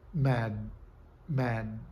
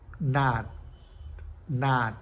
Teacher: a língua se posiciona pressionando os alvéolos numa situação de oclusiva. No entanto, o release final não acontece, que é a explosão a explosão do D. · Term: stop